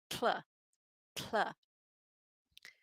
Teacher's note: One of them is tl. It starts with the tip of your tongue pressed against that alveolar ridge behind your teeth, where English speakers say t or d, and then you lower the sides of your tongue and let air flow over them.